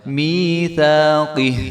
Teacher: جب ہم یہاں پہ وقف کریں گے تو ہا جو ہے وہ ساکن ہو جائے گا، میثاقہ، قاف کو ہا کے ساتھ ملا دیں گے.